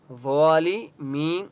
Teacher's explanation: ضا مستعلیہ میں سے اس لیے ضا کو موٹا پڑھیں گے،